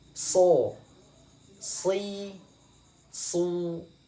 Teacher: Desisnya sama seperti huruf sa, tapi bedanya dia ditebalkan. Kita praktekkan: so, si, su. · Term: huruf so